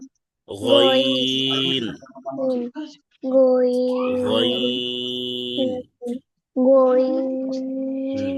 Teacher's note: গইন হচ্ছে কণ্ঠনালীর শেষ ভাগ থেকে উচ্চারণ করতে হবে